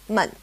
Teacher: In Chinese, it's called 轻 声, which literally means light sound. It's a toneless tone, or a neutral tone, mun.